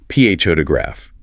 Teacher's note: Or photograph. The stress is on the first syllable. PH ograph. That second O reduces to a schwah full.